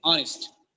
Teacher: Here, the first H is silent.